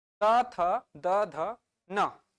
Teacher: त थ द ध न, दांत को टच कर रहा है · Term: दंतव्य